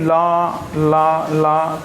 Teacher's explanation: ला का उच्चारण करते समय जो हमारी जीभ है, हमारी जीभ के बगल से सांस निकल जाती है, पार्श्व से गुजर जाती है, और ये जीभ के पिछले हिस्से से बोला जाता है, इसलिए इसे पार्श्व व्यंजन बोलते हैं। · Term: पार्श्विक व्यंजन